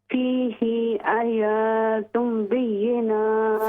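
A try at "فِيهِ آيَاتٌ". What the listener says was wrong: فیہ آیا، دونوں دیکھیں، حمزہ پر بھی کھڑی زبر، یا پر بھی کھڑی زبر. لمبا کریں. غنہ کریں.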